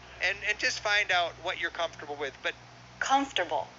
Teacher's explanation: three syllables first syllable stress